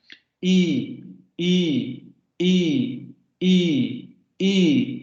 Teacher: Porque si ustedes, por ejemplo, pronuncian la I, se van a dar cuenta que sí, efectivamente la lengua se mueve muy poco y sube, pero también como que se adelanta un poco hacia enfrente. Ojo, se adelanta hacia enfrente, no se pega hacia el paladar ni nada, simplemente se adelanta. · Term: vocales anteriores